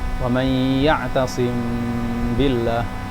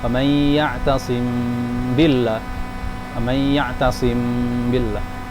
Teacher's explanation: Seperti yang pembahasan ikhfa sebelumnya, yaitu harus mengikhfakan mim. Kemudian gunnah dhahirah, harus ada gunnahnya juga. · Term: ikhfa syafawi